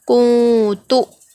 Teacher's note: نون کی جو آواز ہوگی اس کو ہم ناک میں چھپا کر پڑھیں گے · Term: اخفا